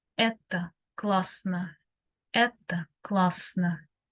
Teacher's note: It is neutral. The final O, A, it is O and A, something in between.